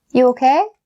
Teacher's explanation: make sure that you raise your intonation at the end of the sentence to make it a question